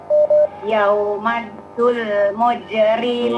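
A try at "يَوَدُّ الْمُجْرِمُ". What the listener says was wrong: Ya, jangan yauma tapi yawaddul.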